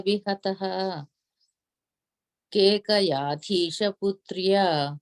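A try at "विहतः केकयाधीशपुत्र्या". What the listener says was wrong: Yeah, after that Vihata, you don't have to say the visarga, you put the ich sound to join it, right? Vihatah Kekayadhisha Putriya.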